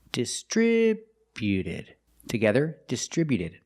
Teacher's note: Put the stress on the second syllable only.